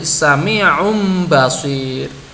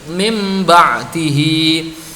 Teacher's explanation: Min ketemu ba'dihi dibaca menjadi mim ba'dihi. Ya, mim sukunnya harus tetap ada dengungnya · Nah, ini cara membaca iqlab yang benar. Pertama, suara nun harus diganti dengan suara mim. Suara mim dibaca ikhfa.